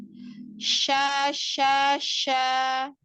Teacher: Tengah lidah yang naik ke tengah lidah yang bertemu dengan langit-langit tengah. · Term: huruf shin